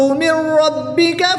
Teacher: نون ساکن کے بعد را حروف ملون میں سے ہے تو یہاں پر ادغام بلا غنہ ہوگا، یہاں پر غنہ کے بغیر ادغام کر کے پڑھیں گے